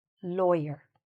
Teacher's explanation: So, where's the stress here? In the first part